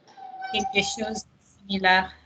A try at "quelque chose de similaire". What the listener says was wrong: Don't go similar. We're not in German. Similaire. Faster. Quelque chose de similaire.